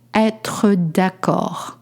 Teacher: You don't pronounce the D at the end.